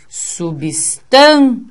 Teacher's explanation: essa sílaba sendo forte, o tan, ele faz com que o ia fique junto. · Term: ditongo